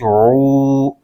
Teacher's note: واو ساکن سے پہلے پیش آ جائے تو واو مدہ ہوتا ہے، اس کو ایک الف کھینچ کے پڑھیں گے · عین کو حلق درمیانی حصے سے ادا کرنا ضروری ہے، ورنہ عین کی جگہ حمزہ کی آواز نکلے گی جو کہ غلط ہو جائے گا۔ آگے شین پر پیش ہے،